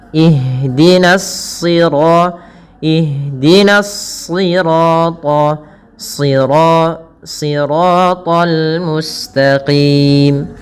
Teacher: huruf shad termasuk huruf-huruf istla yang dia pangkal lidahnya terangkat dan menebal. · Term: huruf isti'la